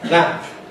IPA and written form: læmp (lamp)